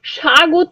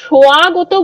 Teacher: এই যে একটা শ্রুতি ধ্বনি, শ্রুতি শোনা যাচ্ছে, ওয়া ধ্বনি একটা শোনা যাচ্ছে, যে ধ্বনিটা আমরা আলাদা করে উচ্চারণ করছি না, কিন্তু একটা ওয়া আসছে।